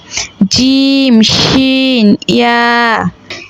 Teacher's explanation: ৬ নম্বর মাখরাজ, জিহ্বার মধ্যখান তার বরাবর উপরের তালুর সঙ্গে লাগাইয়া জিম শিন ইয়া